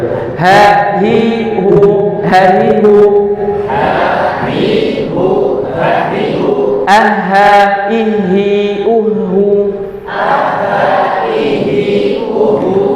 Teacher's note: huruf H ini sama kita keluarkan dari tenggorokan bagian bawah